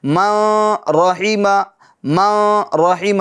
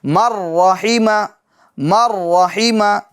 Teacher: یعنی اس طرح نہیں پڑھیں گے ما رحیمہ ما رحیمہ, نہیں, بالکل غلط ہو جائے گا. یوں سمجھ لیجئے کہ ڈائریکٹ یعنی میم کے بعد را کی آواز آ جائے گی